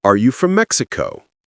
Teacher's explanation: Make your voice rise on Mexico.